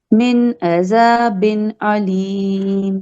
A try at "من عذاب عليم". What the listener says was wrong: عذاب علیم، عین کا مخرج نہیں نکلا. تو عین کا مخرج اور مد اصلی جیسے یجیر پہ